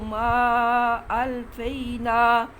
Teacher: اس ما کے اوپر مادہ ہے اس لیے اس کو ایک الف سے زیادہ لمبا کرنا ہے